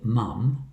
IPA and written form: mʌm (mum)